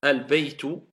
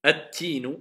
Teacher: on n'entend plus le L, car le L s'est transformé en prononciation en la lettre qui suit. C'est pour cela qu'elle est doublée shedda. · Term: shamsiya